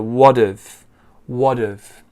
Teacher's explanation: so the h disappears and we link it to the t or the kind of d sound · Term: linking